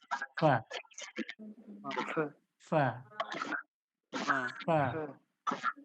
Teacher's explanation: সেই নিচের ঠোঁটটা উপরের দাঁতের সঙ্গে লাগান লাগিয়ে রাখুন তাহলে নিচের ঠোঁট যখন উপরের দাঁতের সঙ্গে লাগবে লাগিয়ে বলুন ফা